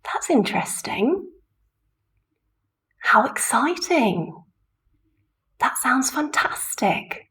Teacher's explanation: on the stressed syllable of the adjective, we're using a rise full intonation.